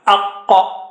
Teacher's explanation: A is low and qa is high.